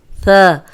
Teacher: اب ثا جو ہے وہ سیٹی کے بغیر ہے، اس میں ذرا بھی سیٹی کی آواز نہیں آنی چاہیے